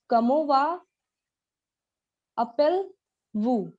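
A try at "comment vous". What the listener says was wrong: वापस वो का अंत में एस है, अपेल में ए है, कंबाइन होगा. कमोवू. कमोवू. कमोवू.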